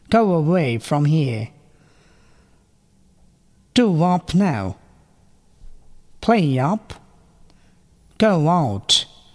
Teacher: নিচের দুটি শব্দের মাঝখানে ওয়া আর ইয়া সাউন্ড বাড়তি শোনা যাচ্ছে।